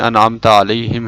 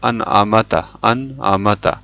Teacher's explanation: میم کے اوپر ساکن ہے لیکن ساکن کی جگہ زبر پڑھ لیا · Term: لحن جلی